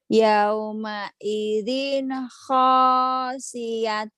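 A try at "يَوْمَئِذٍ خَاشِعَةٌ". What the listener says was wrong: Bukan khasiatun, khasiatun itu ain.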